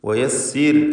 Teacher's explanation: റാഇ സാക്കിനത്തും തൊട്ടു മുമ്പിൽ സ്ഥിരപ്പെട്ട കസ്റുമുണ്ട് എന്നതിനാൽ റാഇന് തർഖീഖ്.